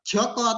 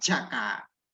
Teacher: Nah ini vokal O diucapkan dalam bentuk vokal A.